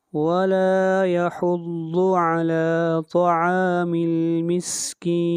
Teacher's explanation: مسکین کے اوپر مد عارض ہے، اس کو 3 الف کے برابر کھینچ کر پڑھیں گے